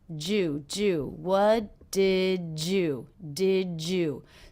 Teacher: So the D and the Y here are combining to make the J sound.